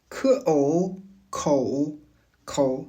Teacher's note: Le mouvement consiste à arrondir et projeter les lèvres encore davantage pour glisser vers un O très serré. Contrairement au O français qui est un son unique et stable, le O chinois est un mouvement. Il est plus proche de la diphtongue dans le mot anglais O. · La pointe de départ est un O déjà assez fermé et profond. Le mouvement consiste à arrondir et projeter les lèvres encore davantage pour glisser vers un O très serré.